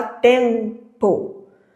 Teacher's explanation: Na palavra tempo, esse M ele só tá indicando uma nasalização do som.